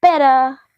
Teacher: So it's nothing like better, it's a very clear, strong duh, but it's better, like it's a very quick and weak duh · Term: flap or a tap T